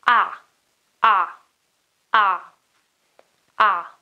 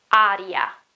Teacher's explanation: A, okay, is a very open vowel, okay? It's not A or A as it is in English or air.